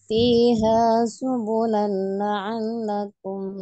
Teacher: Lam tas itu tidak tidak ditahan ya. Masuk tanpa dengung aja ya, idgham bilawunnah